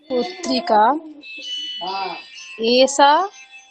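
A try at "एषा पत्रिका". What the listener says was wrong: বানান বলুন, এসা এসা বানান বলুন। কিন্তু মূর্ধন্যস্বর উচ্চারণও করতে হবে না, এ সা দন্তস্থ শোনাচ্ছে, মূর্ধন্যস্বর উচ্চারণ আনতে হবে। এষা পত্রিকা বলুন। শা শা শা ট ঠ ড ঢ শ পড়ুন, উচ্চারণ করুন।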